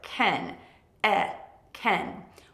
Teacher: When you want to say yes, I can, make the vowel sound very short.